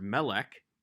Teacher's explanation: has a segal in both the first and the second syllables the first syllable maintains the short vowel even though it's an open syllable